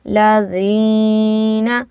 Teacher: یا ساکن سے پہلے زیر ہو تو یا مدہ ہوتا ہے، ہم نے زال کو تھوڑا کھینچنا ہے۔